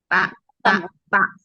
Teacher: Jadi makhrajnya ta itu di ujung lidah bertemu dengan tempat tumbuhnya gigi.